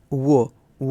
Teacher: वो का उच्चारण स्थान जो होता है वो ओठ और दंत होता है। ओठ और दांत जो होता है इसका उच्चारण स्थान होता है।